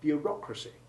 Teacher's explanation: when the stress moves from the first to the second syllable in bureaucracy, the formerly long O sound of EAU becomes short.